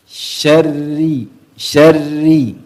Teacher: ya rnya tidak terlalu banyak getaran